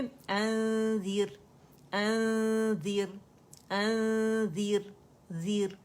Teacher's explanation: ज़ैल के मखरज के करीब जाना है, टच नहीं करेंगे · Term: इख्फा हकीकी